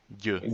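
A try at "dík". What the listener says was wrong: You're saying it with J, with y. it's with y, which is the soft D.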